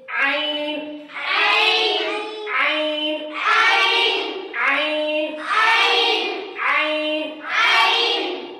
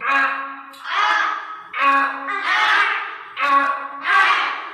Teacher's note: ये आइन निकलेगा हलक के दरमियानी हिस्से से, यानी हलक के बीच वाले हिस्से से निकलेगा